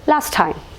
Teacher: So here the t, it is elided. അപ്പോൾ ഇവിടെ ഈ t എന്നുള്ള സൗണ്ടാണ് നമ്മൾ ഒമിറ്റ് ചെയ്ത് കളഞ്ഞത്.